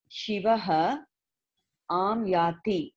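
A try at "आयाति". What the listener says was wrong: not aam yati that is not a dot it's a mistake me ayati yeah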